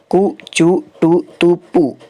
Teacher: तो जो स्पर्श वर्ण होते हैं कु, चु, टू, तु, पु, या फिर कवर्ग, चवर्ग, टवर्ग और पवर्ग, तो इनका जो आभ्यंतर प्रयत्न होगा वो स्पृष्ट होगा